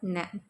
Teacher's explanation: நாவின் நுனி மேல்வாய் பல்லின் அடிப்பகுதியை தொடுது